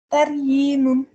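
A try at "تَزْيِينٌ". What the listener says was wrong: voilà, c'est un zaï, oui. Ouais, comme il y a un point, c'est un zaï. Donc, ça fait tazyinun. juste, voilà, c'est juste le zaï qui n'allait pas.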